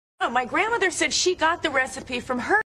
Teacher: the accent is in the first syllable corresponding to Grand